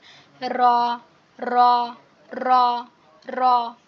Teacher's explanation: র এর উচ্চারণটা একটা কম্পন হবে, একটা কম্পন সৃষ্টি হবে। র র র র, এভাবে একটা কম্পন সৃষ্টি হবে।